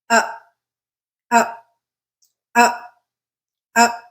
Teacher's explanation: the sound is coming from the central part of our mouth there isn't really a lot of tongue movement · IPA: /ə/